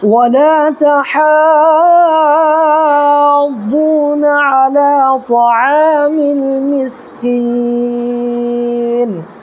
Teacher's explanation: کریں گے، یعنی کہ جب رکنے لگیں گے تو ٹھہریں گے، تو یہاں پر یہ نون جو زیر ہے اس کو ساکن پڑھیں گے، یہ ساکن ہو جائے گا